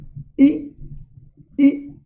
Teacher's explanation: Position of tongue is front. Height of tongue, it is in close area. Okay, position of lips, you say e, it's spread. And position of jaws like this, you can feel e, narrow.